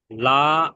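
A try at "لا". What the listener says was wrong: মাঝখানে যে লা পড়ছেন, লা কে কেন টানছেন? লা কে তাড়াতাড়ি পড়েন। লা লা একালিপ, লা একালিপ টান হয়ে যাচ্ছে।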